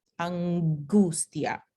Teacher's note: Todavía no hemos aprendido mucho sobre esto, pero sabemos que es una consonante nasal. Entonces, cuando g viene después de consonante nasal, sale como el alófono fiel, o sea, oclusivo.